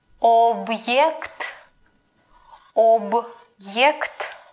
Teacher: The apostrophe like makes a pause between a consonant and a vowel.